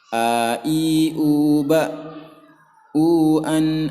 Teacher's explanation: makhraj hamzah ini adalah di tenggorokan bagian paling bawah